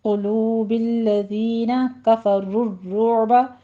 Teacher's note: الذین کفروا الرعب، دونوں جگہوں پہ را مفخم پڑھی جائے گی، را کی تشدید ادا کیجیے اور عین کو وسط حلق میں لے جا کے سٹاپ کرنا ہے